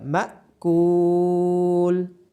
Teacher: کاف کے بعد واو مدہ ہونے کی وجہ سے کاف کو لمبا کیا جائے گا